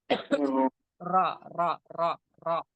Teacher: जबान का किनारा और जबान की पुष्ट का कुछ हिस्सा जब लगाते हैं, उसके मसोड़ों को लगाते हैं, तो रा निकलता है